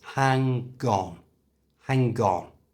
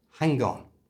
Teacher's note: to say it naturally move the G from the end of hang to the front of on